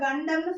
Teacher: நாவுடைய நுனி பகுதி இருக்கு இல்லையா, அந்த மேல்வாய் அன்னத்துடைய நடுப்பகுதியை போய் நல்லாவே தொடும். அப்பர் ஜாவை போய் அந்த டிப்பு போய் தொடும்.